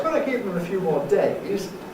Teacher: It could be with a fall rise